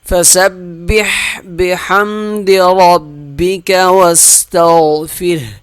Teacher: ہا کی آواز آئے گی آخر میں، ساکن ہا ہوگا